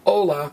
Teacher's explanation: It's spelled H-O-L-A, but it's pronounced hola. The H is silent. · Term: silent letter